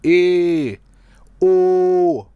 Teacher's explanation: जिन स्वरों का उच्चारण करते समय जीवा और मुख विवर जो होता है के ऊपरी भाग की दूरी संवृत स्वर की अपेक्षा अधिक होती है, यानी जीवा जो जीभ होती है ये संवृत स्वर के उच्चारण की अपेक्षा थोड़ा कम ऊपर की ओर उठता है, उन्हें ईषद संवृत स्वर कहते हैं।